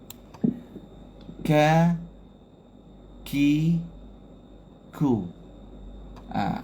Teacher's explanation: Ada angin. Tapi angin tu selamba je. Bukan angin macam kita buat kuat sangat. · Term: hams